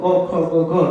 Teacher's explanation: તમારે ક ખ ગ ઘ બોલવા હોય તો એ કંઠથી જ બોલવું પડે. તમે જુઓ ક ખ ગ ઘ તો અહીંયા ગળા ઉપર ભાર આવશે.